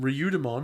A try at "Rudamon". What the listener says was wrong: Rudamon. There's no I in that. It's Rudamon. No, it's Rudamon. No, it's Rudamon. Rudamon.